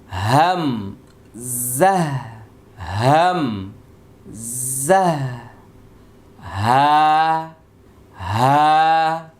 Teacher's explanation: কণ্ঠনালীর শুরু হইতে 2টি হরফ উচ্চারিত হয়